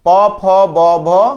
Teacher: কি ঠোট ওকে প ফ ব আমি যখন উচ্চারণ করতেছি তখন আমার এই ঠোঁট একটার সাথে আরেকটা টাচ করতেছে